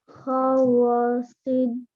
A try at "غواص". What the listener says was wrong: How long are we going to say the waw for?